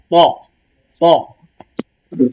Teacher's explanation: একটু জিহবাটা মোটা করে ত তালুর সঙ্গে লাগবে মোটা করে ত ত একদম দুই দাঁতের দুই দাঁতের একদম গোড়ার